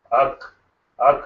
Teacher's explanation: Ak, there is no echoing sound there. So that means that vocal cords are set apart, and they are not together. They are not closer even. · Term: voiceless sound